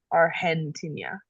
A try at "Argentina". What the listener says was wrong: Yep, and you don't need the ñ sound on the N if it does not have the tilde. So it's Argentina. Argentina.